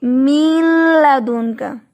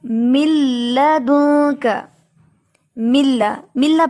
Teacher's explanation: ہم اس کو یہ نہیں پڑھیں گے من لدنک، بلکہ ہم یہاں پڑھیں گے من لدنک، ملا پڑھیں گے۔ نون جو ہے وہ مکمل طور پہ داخل ہو چکا ہے لام میں، جس کی وجہ سے نون کی آواز ختم ہو گئی ہے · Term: ادغام